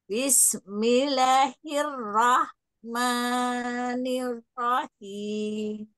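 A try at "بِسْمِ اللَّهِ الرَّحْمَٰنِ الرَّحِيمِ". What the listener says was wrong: Yang apa afwan itmamul harokatnya sempurnakan dulu bis ba ba ba bis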